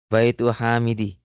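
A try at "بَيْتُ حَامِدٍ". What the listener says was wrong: Baitu Hami. Tanwin ya. Baitu Hamidin.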